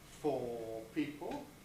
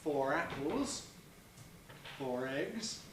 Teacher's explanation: we lost that R when the following sound was a consonant